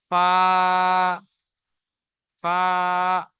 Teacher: নিচের ঠোঁটের ভিজে অংশ এবং সামনের উপরের দুই দাঁতের আগার সাথে লাগিয়ে উচ্চারিত হয় ফা।